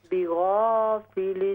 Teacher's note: غین کے ساتھ الف کو بھی موٹا کیجئے